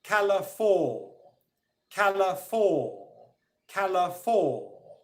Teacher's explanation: you should be able to hear that ca is stronger than la, but it's not as strong as for. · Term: second level of stress